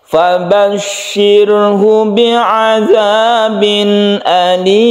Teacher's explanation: ada sukun ro yang sebelumnya kasroh, maka roknya dibaca tipis atau tarkik